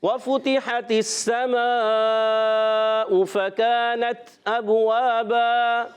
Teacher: با ساکن ہے، قلقلہ ہوگا، آواز لوٹ کر آئے گی، واو الف زبر وا، ایک الف کھینچنا ہے، 2 زبر کی تنوین کو الف سے بدل دینا ہے، اس کو کہتے ہیں وقف بالابدال مع الالف۔